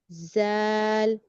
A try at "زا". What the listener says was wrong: وسل وسل وسل، ز، نہیں وسل کی آواز نہیں آ رہی، ز، ٹی کی آواز، دونوں دانت بند کیجئے، رہی ہے سیٹی کی آواز مگر زا میں نہیں آئی، سین میں آئی ہے، زا میں نہیں آئی.